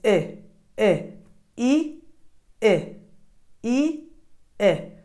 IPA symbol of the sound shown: ɪ